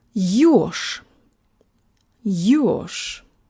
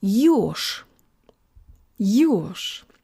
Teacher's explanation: this word sounds not like it has zh at the end, but sh, like in fresh. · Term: devoicing